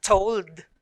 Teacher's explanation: The two consonants are blended, but you can still hear the individual sounds of L and D. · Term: final consonant blend LD